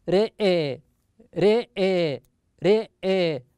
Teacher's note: إذا وقف عليها شعبة فإنه يميل الراء ويميل أيضا الهمزة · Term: إمالة